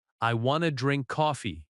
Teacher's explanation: I want to becomes I wanna. I want to drink coffee. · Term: reduction